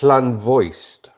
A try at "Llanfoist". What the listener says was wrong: Voiced. No, it's not. It's an F.